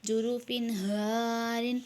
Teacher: تنوین کے بعد ہا ہے، اظہار میں سے ہے، اظہار کریں گے